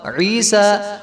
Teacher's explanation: ہدایت نمبر 5، بعض لوگ کھڑے زبر والی کلمات پر وقف کرتے ہوئے 3 یا 4 الف کی مد کرتے ہیں، یہ بالکل غلط ہے۔ وقف میں بھی کھڑے زبر کی مقدار 1 الف ہی رہے گی